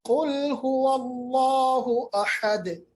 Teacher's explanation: क़ाफ को देखिएगा मैंने मोटा पढ़ा